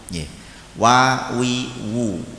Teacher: kedua bibir atas dan bawah menjadi makhrajnya huruf wawu